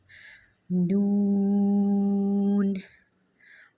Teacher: جہاں سے را ادا ہوا، جہاں سے لام ادا ہوا، وہیں سے ہی نون ادا ہوگا، یعنی زبان کی سائڈ آف ٹنگ سے